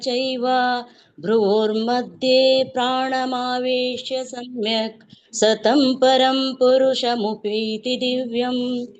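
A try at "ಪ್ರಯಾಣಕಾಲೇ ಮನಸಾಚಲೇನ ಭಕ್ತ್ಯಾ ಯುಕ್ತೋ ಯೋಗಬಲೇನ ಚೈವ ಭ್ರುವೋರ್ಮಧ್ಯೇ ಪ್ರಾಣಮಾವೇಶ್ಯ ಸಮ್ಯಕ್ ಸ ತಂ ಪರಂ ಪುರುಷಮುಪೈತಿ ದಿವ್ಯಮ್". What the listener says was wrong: ಇವರದು tune ಸರಿ ಇದೆ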